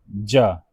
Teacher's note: ज जो है अल्पप्राण तालब ध्वनि है।